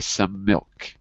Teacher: So the M in some and the M in milk get put together in a longer consonant. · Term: long C link